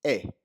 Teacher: It's more of a shorter, sharper sound than how we say A. It's eh, but that's the Spanish E.